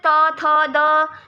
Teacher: लेकिन अगर आप बोलते हो त थ द, तो इनको बोलते हुए आपकी जीभ जो है वो दांतों को टच करेगी, तो वो दांतों को टच कर रही है इसलिए उनको दंत्य ध्वनियाँ बोल दिया।